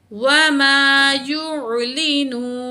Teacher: آیت مکمل ہوئی تو نون ساکن پڑھا جائے گا، نون کی زبر ہٹ جائے گی